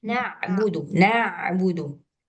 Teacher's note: Ee na'budu na'budu bukan rakhawah. Apa namanya itu tawasud ya antara rakhawah dan syiddah.